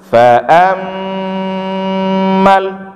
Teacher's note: mim ini ada tasydid ya. Nah, jadi bacaannya wajibul gunnah. Agak lama gunnahnya